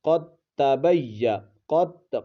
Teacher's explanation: دال ساکن ہے اور اس کے بعد تا ہے، دال کا تا میں ادغام ہو چکا ہے